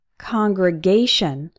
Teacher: This word is an exception. The stressed syllable is A, congregation, but we still pronounce con as in on.